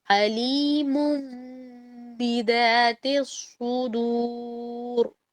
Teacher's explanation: اس کی نون کی آواز با متحرک کی وجہ سے میم سے تبدیل ہو گئی